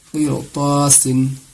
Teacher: رائے ساکنہ کے بعد حروف مستعلیہ میں سے طا آ رہا ہے، اسی لیے اس کو ہر حال میں پر کر کے پڑھیں گے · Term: موٹی آواز